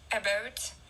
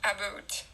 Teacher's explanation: Almost all Canadians have Canadian rising, whereby the vowel in about can sound slightly like American about. But around Toronto, the diphthong tends to be fronted, about, while in Western Canada and the prairies, it tends to be back